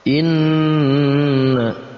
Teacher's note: Kita baca dengan didengungkan tapi juga dipanjangkan dua harokat. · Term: gunnah musyaddadah